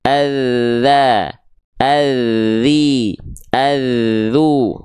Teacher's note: huruf dzal itu karena dia punya sifat rokhwah, mengalir suara, maka dialirkan suaranya ketika ujung lidahnya disentuhkan ke ujung gigi sari atas kita